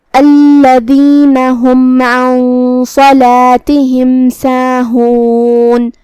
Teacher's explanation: یہاں حکم ہے اظہار شفوی، ہم میم کو ظاہر کریں گے اور اسے بغیر کوئی غنہ کے یہ حکم کو ادا کریں گے